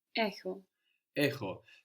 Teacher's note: So we have the stress at the beginning